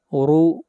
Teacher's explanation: را کو موٹا پڑھیں گے اور را کے اوپر پیش ہے